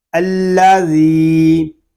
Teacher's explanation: الذی میں ذال کو ہم ایک الف تک کھینچ کر پڑھیں گے کیونکہ یہاں پہ یا مدہ ہو رہا ہے.